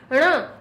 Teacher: है संग में उसके नासिका भी जुड़ जाती है ण ण हमारी मूर्धा से भी निकलता है नासिका जुड़ जाती है